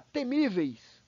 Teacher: Já temíveis, ela não é proparoxítona, pessoal, ela é uma paroxítona, porque o acento está na penúltima sílaba, no mi